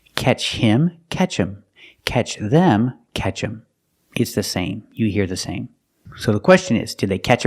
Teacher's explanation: Them is not a stressed word, so the TH is silent and you hear catch him.